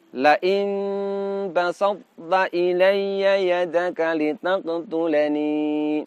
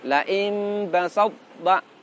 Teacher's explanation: do yang punya sifat kolkolah, kolkolahnya tidak ditampakkan karena dia lebur ke huruf ta, namun sifat idbaqnya tidak boleh dileburkan. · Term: idgham nakis